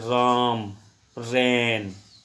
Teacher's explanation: जो फेफड़ों की जो हवा है वो पास हो जाती है कहाँ से? नाक के द्वारा। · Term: नेसल